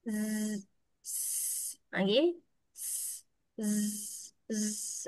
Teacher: hujung lidah menuju ke gigi bawah. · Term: zai